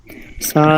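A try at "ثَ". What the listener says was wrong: সাটা আরো একটু নরম করেন, আমরা নরম পড়াইছিলাম, সাতে শব্দ আসবে না, সা জবর সায়ের মাখরাজটা এখনো অনেকে ধরতে পারেন নাই। এই যে জিব্বা আগাটা আর এই দুই দাঁতের আগা এরকম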